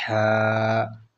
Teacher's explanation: ح کا مخرج بالکل گلے کے درمیان والی جگہ سے ہے